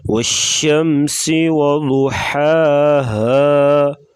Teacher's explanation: ضاد کو پر پڑھیں گے، ہا گلے سے آواز نکالیں گے۔ والشمس وضحاها، سین سیٹی جیسی آواز نکالیں گے۔